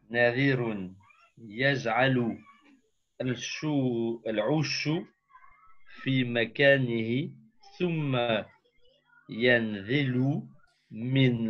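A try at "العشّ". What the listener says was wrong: Non, non, là il y a une petite erreur. Narirun yaj'alu al-'usha. J'ai entendu 'ushu, moi. Narirun yaj'alu al-'usha.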